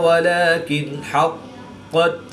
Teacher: الف سے پہلے قاف پر زبر ہے تو الف مدہ، واو ساکن سے پہلے لام پر پیش ہے تو واو مدہ، اس کو بھی ایک الف یعنی 2 حرکات کے برابر کھینچ کر پڑھیں گے، اور اس کو بھی ایک الف یعنی 2 حرکات کے برابر کھینچ کر پڑھیں گے۔ نون ساکن کے بعد ہا حروف حلقی میں سے ہے تو یہاں پر اظہار ہوگا، یعنی نون ساکن کو ظاہر کر کے پڑھیں گے، غنہ نہیں کریں گے۔